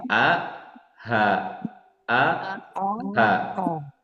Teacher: Nah, jadi makhrajnya ini dari tenggorokan bagian bawah. Bawah pangkal tenggorokan bawah atau pangkal tenggorokan tadi ya. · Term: huruf H